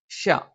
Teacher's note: നാവിന്റെ മധ്യഭാഗം മേലെ അണ്ണാക്കിലാണ് · അണ്ണാക്കിലാണ് പക്ഷേ വ്യത്യാസം എന്താണെന്ന് ചോദിച്ചു കഴിഞ്ഞാൽ ശ ഉച്ചരിക്കുന്ന സമയത്ത് നാവിന്റെ രണ്ട് നാവിന്റെ മധ്യഭാഗത്തിന്റെ രണ്ട് അറ്റങ്ങൾ മേലെ അണ്ണാക്കൽ സ്പർശിക്കുകയും നാവിന്റെ മധ്യഭാഗം അങ്ങനെ കുഴിഞ്ഞു കിടക്കുകയും അതിലൂടെ വായു സഞ്ചരിക്കുന്ന ഒരു രീതിയിലാണ്